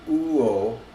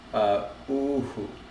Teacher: actually the H doesn't disappear when it's between two like vowels. And so it would be, it would be uo, but uhu.